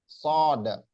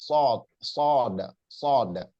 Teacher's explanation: Kalau sod itu dia nggak menyentuh, nggak sampai menyentuh gigi geraham.